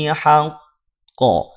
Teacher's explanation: Qafnya dia bertasydid. Maka saat waqaf, saat berhenti pada huruf qaf, qafnya menjadi sukun. Saat sukun, qaf punya sifat qalqalah. Kemudian dia juga bertasydid, maka qalqalahnya qalqalah akbar.